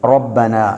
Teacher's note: ராவுக்கு ஃபத்ஹா வந்திருக்கிறது. எனவே நாங்கள் அதை வல்லினமாக ரொப்பனா என்று மொழிவோம். ரப்பனா என்று மொழியாமல் ரொப்பனா என்று வல்லினமாக மொழிவோம்.